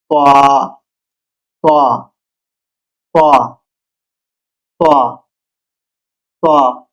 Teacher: উচ্চারণ মোটা ত, গলা থেকে ভারী করে বের হয়। বাংলা ধ্বনি তা, ভারী বর্ণ।